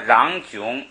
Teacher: 因为在后边你不愿意送气，读成囧都可以